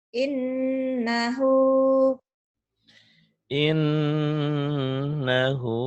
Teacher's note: Ditahan iya, ditahan ada panjangnya satu alif sampai satu alif setengah dan ada dengung ke hidung